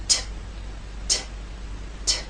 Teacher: you will feel no vibration when you make the T sound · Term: unvoiced consonant